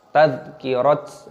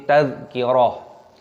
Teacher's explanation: Dzalnya berharokat sukun dibaca tadhkirah. Tak marbutohnya ketika berhenti maka dibaca ha, bukan dibaca tadhkirat, nah, seperti itu.